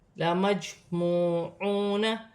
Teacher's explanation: جیم ساکن ہے، حرف قلقلہ میں سے ہے، قلقلہ پیدا ہوگا۔ لَمَجْمُوعُونَ، واو ساکن سے پہلے پیش ہے تو واو مدہ بن رہی ہے، ایک الف کی مقدار کھینچ کر پڑھا جائے گا، یہاں چھوٹی سی لام ہے، یہاں وقف نہیں ہوگا۔